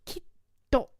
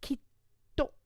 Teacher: The little tsu gives us a double T sound.